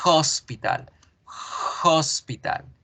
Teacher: hospital en hospital yo la escribo con h en español pero en español esa h no suena en inglés sí debe sonar